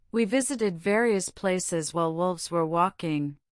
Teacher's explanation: Your mouth must now dance nimly between the rounded lips of the W and the lip teeth contact of the V